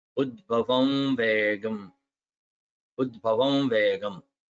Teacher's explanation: that nasal ma before vegam, before va becomes another va, nasal sounding va